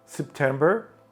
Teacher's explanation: перший склад нечіткий СП СП відштовхуємося не наголошений склад СП потім наголошений Тем з чіткою е